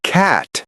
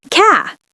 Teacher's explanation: So when they say cat, it becomes ca with a very soft ending almost no t.